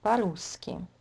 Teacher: it will be pronounced as one word, and all will be unstressed because the stress in this longer word is on U. So по-русски.